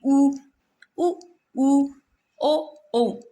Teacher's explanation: आपकी आकृति है ना होठ की गोल होएगी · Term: वृत्तामुखी